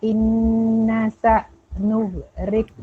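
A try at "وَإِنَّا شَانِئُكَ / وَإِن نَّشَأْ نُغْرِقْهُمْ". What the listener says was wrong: Nasya. Ada 3 titik. Wa inna sya. lepas dia berdesis. Dia macam begitu. Tak boleh. Nughriqahum. Yang kedua qalqalah. Riqahum mesti lantun. huruf go bukan qalqalah.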